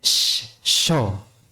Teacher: Jadi ketika kita mengucapkan sya, tenggorokan atau pita suara kita tidak terlibat, tidak ada getaran. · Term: hames